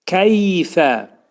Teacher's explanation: Keyfə, yə hərfi izhar olur. Fə hərfinin məxrəci demək yuxarı üst dişlə alt dodaq arasında olacaq.